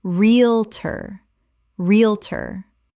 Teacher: 2 syllables in natural speech. The middle syllables collapse entirely.